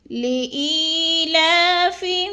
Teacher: ای کو تھوڑا سا ہم نے لمبا کرنا ہے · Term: یا مدہ